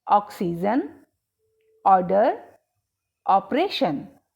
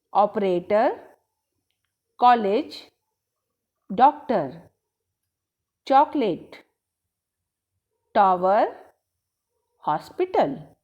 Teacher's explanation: यह ध्वनि नज़दीक है हिंदी स्वर आ तथा ओ के। हम इसे ऐसे समझेंगे कि जो ध्वनि अ होती है यह हिंदी स्वर आ तथा ओ का मिला जुला रूप है।